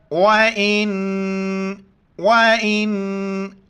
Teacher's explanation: नून साकिन है, नाक में आवाज़ पैदा करनी है